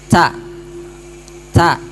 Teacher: huruf ta itu mempunyai sifat lazimah hams ya berdesis atau nafas berhembus Nah jadi sifat lazimah itu tidak boleh dihilangkan dalam keadaan apapun